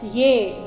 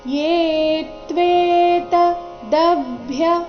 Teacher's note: ಏ ದೀರ್ಘ ಬಂದು ಸೌಮ್ಯ ಆಘಾತ ಮುಂದೆ ತ್ವೆ ಸಂಯುಕ್ತ ಅಕ್ಷರ ಇದ್ದ ಕಾರಣ